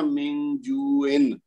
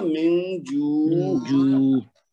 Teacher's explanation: اگر ہم جو پہ رکیں گے نا تو پھر ہم نے اس کی تنوین نہیں پڑھنی، یعنی ہم نے یہ نہیں کہنا من جوئن، ایسے نہیں کرنا.